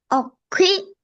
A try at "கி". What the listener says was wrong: அக்கி அல்ல, கி. வாய் ஃபுல்லா கி.